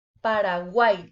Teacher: al final de la palabra, a pesar de ser una consonante, el sonido es como si fuera de una I latina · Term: triptongo